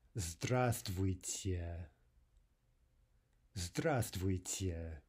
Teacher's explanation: We're dropping the V, right? So instead of saying Здравствуйте, the way we're spelling this word, we say Здравствуйте.